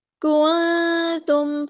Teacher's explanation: ہے، ما کنتم، کاف یہاں پہ دیکھیں باریک لائٹ لیٹر ہے، نون ساکن کی آواز کو ہم چھپا دیں گے، اخفا ہو رہا ہے